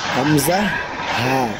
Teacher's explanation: এক নাম্বার মাখরাজ কণ্ঠনালীর শুরু হইতে উচ্চারিত হয়। এক নাম্বার মাখরাজটাই কণ্ঠনালীর শুরু হইতে উচ্চারিত হয়, মানে গলার শুরু হইতে।